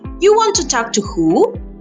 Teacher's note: That's where the voice rises. The words before are called the pre-nuclear part. They stay more or less flat. And the rising tone happens only on who. · The nucleus is who. That's where the voice rises. The words before are called the pre-nuclear part.